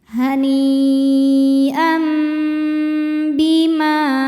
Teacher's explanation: Berikutnya ada hukum iklab karena ada tanwin fathah menghadapi huruf ba. Maka tanwinnya ditukar atau diganti menjadi bunyi mim jadi am, kemudian dengungkan. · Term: iqlab